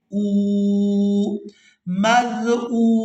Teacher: ہم نے حمزہ کو واو ساکن کے ساتھ ملاتے ہوئے کھینچ کر ادا کرنا ہے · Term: واو مدہ